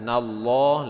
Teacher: lafaz Allah dibaca tebal, panjangnya 2 harokat juga mad asli